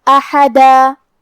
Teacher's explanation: حرف الحا کو ہم حلق کے درمیان والے حصے سے ادا کریں گے، اور کیونکہ الف پہ اور حا پہ زبر ہے، تو ہمیں یہ دونوں زبر کو برابر سے ادا کرنا ہے.